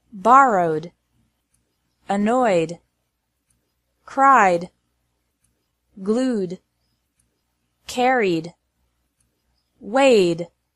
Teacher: e d is pronounced like d after verbs ending in a vowel sound